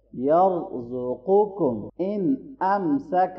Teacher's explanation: نون ساکن کے بعد حرف حلقی میں سے حمزہ ہے تو اظہار کریں گے